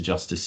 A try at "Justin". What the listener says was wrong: Justin. Justin. I think you said justice, didn't you? Justin.